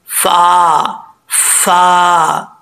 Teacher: फा ऊपर वाले जो दो दांत हैं, ऊपर वाले दांतों का निचला जो किनारा है ये नीचे वाले होंठ की तरी वाली जगह पे लगेगा तो फा पढ़ा जाएगा, फा फा, ठीक है, होंठ गोल करके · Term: फा का मखराज